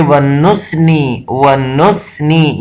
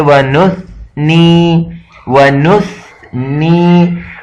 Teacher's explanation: کے درمیان سے تھوڑا سا زبان کا سرا باہر نکال کر یہ جو سین کا سیٹی کا جو آواز ہے یہ بالکل ختم ہو جاتا ہے